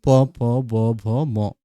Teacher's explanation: অনেক সময় এগুলোকে দ্বি-ওষ্ঠ ধ্বনি নামে পরিচিত। দ্বি-ওষ্ঠ ধ্বনি মানে ২ ঠোঁট লাগে।